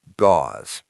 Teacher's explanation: It has a long Z sound at the end.